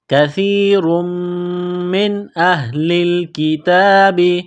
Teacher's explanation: نون ساکن کے بعد حمزہ ہے، حروف حلقی ہے تو نون ساکن پر غنہ نہیں کریں گے۔ اس بات کو سمجھ لیجئے کہ نون ساکن اور تنوین کے بعد جب 6 حروف حلقی حمزہ ہا، عین ہا، غین خا، جب یہ 6 حروف آ جائے تو نون ساکن اور تنوین پر غنہ نہیں کریں گے۔